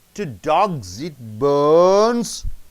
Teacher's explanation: If you stress on more on bones, it is a repeated question. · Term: Repeated questions